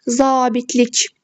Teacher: A saiti burada uzanır və vurğu sonuncu hecəyə düşür. Yəni 3-cü hecəyə düşür.